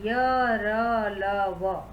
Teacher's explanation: जिन व्यंजनों का उच्चारण करते समय जिह्वा पूरी तरह से मुख के किसी भी भाग को नहीं छूती हो वे अंतःस्थ व्यंजन कहलाते हैं। इसका उच्चारण स्वर और व्यंजन के मध्य में होता है।